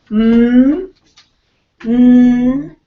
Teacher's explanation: first three are nasals you have the bilabial so once again at the front of your mouth both lips together air comes out through the nose so it's a nasal all of the nasals are voiced m m what would you